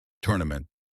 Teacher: Tournament, three syllables. Stress on the first part, tournament.